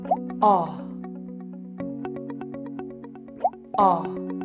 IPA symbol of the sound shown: ɑ